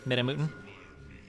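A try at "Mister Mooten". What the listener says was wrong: It's Midder, Mutin. Not Midda.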